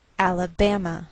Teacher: transcriptions there are two markings one is raised one is lowered the primary stress is a raised Mark secondary stress is shown by a lowered Mark so the greater stress is on this third syllable we say Alabama